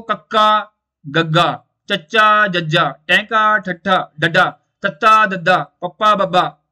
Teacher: ਅਲਪ ਪ੍ਰਾਣ ਦੇ ਵਿੱਚ ਆਵਾਜ਼, ਹਵਾ ਬਹੁਤ ਘੱਟ ਬਾਹਰ ਆਉਂਦੀ ਹੈ